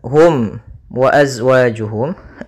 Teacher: suara mimnya harus dibaca dengan jelas tidak boleh ditahan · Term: izhar syafawi